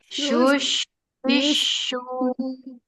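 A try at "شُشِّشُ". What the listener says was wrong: Lagi ditambah ketebalannya, kemudian disambung dengan tasydid, tanpa ada jeda.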